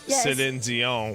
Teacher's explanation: there's like more nasality to it because I'm in like French mode